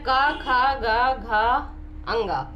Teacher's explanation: ये हमारे कंठ से स्पर्श होते हुए बाहर आ रहे हैं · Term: कंठव्य व्यंजन